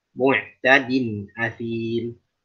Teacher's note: Bedakan, ain ada pada lafaz mu'tadin. Athim, hamzah ada pada lafaz athim.